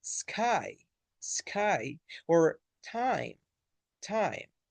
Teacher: It starts with a and moves to e